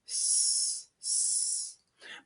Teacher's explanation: s is voiceless. That means that your vocal cords don't vibrate. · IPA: /s/